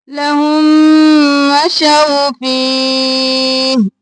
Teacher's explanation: इदगाम शफ़वी, हा को इस मीम के साथ मिलाएंगे, मीम पे गुन्ना करेंगे